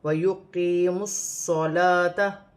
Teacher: صاد چیٹی والا ہے، موٹا ہے، اور لام پر کھڑی زبر ہے، اسے 1 الف کی مقدار کھینچ کر پڑھا جائے گا۔